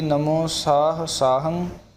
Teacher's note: ਅਤੇ ਅੱਗੇ ਹੈ ਸਾਹੰ, ਸਾਹੰ ਟਿੱਪੀ ਦੀ ਬਹੁਤ ਵਿਸ਼ੇਸ਼ ਮਿਹਨਤ ਸਾਨੂੰ ਕਰਨੀ ਚਾਹੀਦੀ ਹੈ, ਨਹੀਂ ਤਾਂ ਆਮ ਅਸੀਂ ਇਸ ਨੂੰ ਟਿੱਪੀ ਨੂੰ ਗੱਗੇ ਰੂਪ ਦੇ ਵਿੱਚ ਬੋਲੀ ਜਾਂਦੇ ਹਾਂ।